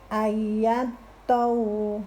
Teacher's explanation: dengungkan dulu baru kemudian ditekan karena huruf to-nya bertasydid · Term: idgham bi gunnah